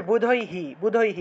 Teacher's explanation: বিসর্গের পরিবর্তে যে হ টা আসবে সেই হ এর সামনে রসইকার যুক্ত হয়